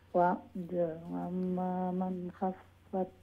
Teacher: আমরা কারণ নুন সাকিনের উপরে খাইছে নুন সাকিনের উপরে খাই যদিন তাহলে এজহার ক্লিয়ার সাউন্ড ইনো গুন্না হইতো না উইদাউট গুন্না